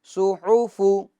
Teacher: صاد پیش سو، حا پیش حو سوحو، فا پیش فو سوحوفو. صاد کو پور کرنا ہے کیونکہ یہ حروف مستعلیہ میں سے ہیں